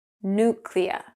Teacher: Now, in North American accents, they will drop the Y sound from the first syllable. Nuclear. >> Americans do not pronounce the word nuclear.